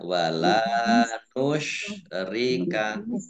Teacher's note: Nusyrika ya shin besar ya. Nusyrika bibirnya agak mencucu ya.